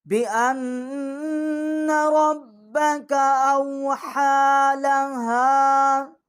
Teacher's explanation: آگے جو ہا ہے یہ حروف حلقی ہے، یہ اس کو ہم اقصی حلق سے اس کو نکالیں گے